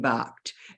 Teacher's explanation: if you look at ED as in the word barked, it's ED making the sound T as in barked